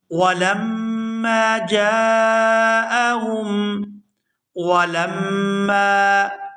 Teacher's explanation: یہاں میم مشدد پر غنہ کریں گے اور میم کو جب دوسری دفعہ ادا کریں گے تو کھینچ کر ادا کریں گے کیونکہ اس کے ساتھ الف مدہ ہے۔